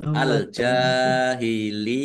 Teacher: ya tasdid yang didahului dengan kasrah ini dibaca ya panjang dua harakat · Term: mad tamkin